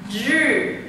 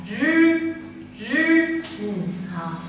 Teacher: nó giống chữ r của tiếng Việt nhưng mà nó không rung, không phải là r, không phải là r, mà là rư rư.